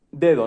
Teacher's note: El ejemplo, la primera D es plena, es dental en español, de Y la segunda D es interdental